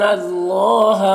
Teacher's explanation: یہاں پر اللہ کے لام سے پہلے نون کے اوپر زبر ہے تو اللہ کے لام کو پر پڑھیں گے، کھڑا زبر ہے، ایک الف کے برابر کھینچیں گے۔